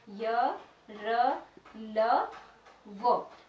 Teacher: और इनकी की विशेषता ये होती है कि ये जो व्यंजन है यह जब हम इनका उच्चारण करते हैं तो इसमें हमारी जो जीभ है वो मुंह में किसी भी अंग से टच नहीं होती है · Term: अंतस्थ व्यंजन